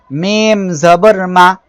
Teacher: দুই ঠোঁটের শুকনো অংশ থেকে মিম অক্ষরটি উচ্চারিত হবে